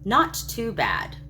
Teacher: with 3 equally stressed syllables, it gently forestalls further inquiry